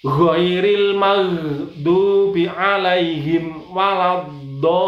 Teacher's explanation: Di situ ada fathah tidur yang panjang. Do itu panjangnya adalah 5 sampai 6 ketuk. Jadi 5 sampai 6 ketuk atau 2,5 alif sampai 3 alif.